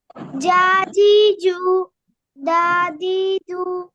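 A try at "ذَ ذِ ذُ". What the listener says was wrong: না আমরা তো তখন দা পড়ি না, এটা যা পড়েছিলাম, যা। দাল না তো, এটা জাল। হ্যাঁ, জাজিজু।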